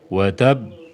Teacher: Watab ini qalqalahnya lebih ditunda.